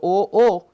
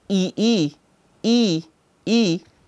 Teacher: because the tongue is pushed backward in the mouth. So, O-O, the tongue is moved backward, but when I say E-E, E-E, the tongue is moved towards the forward section. Also, this is related to the movement of the jaw also.